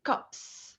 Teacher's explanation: the s has to be voiceless in order to agree with the voiceless preceding consonant · the s after the p, which is voiceless, is still voiceless. So we say cups.